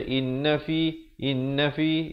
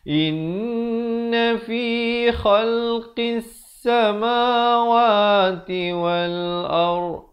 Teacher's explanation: In, dengungkan dulu dua harakat